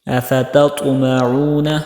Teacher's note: پہلے تا ہے پھر دوسرا طا ہے، ان دونوں میں آپ نے فرق کرنا ہے، تا کو باریک اور طا کو موٹا۔